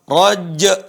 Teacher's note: Dan huruf jim tidak qalqalah.